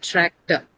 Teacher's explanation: because the stress is on the first syllable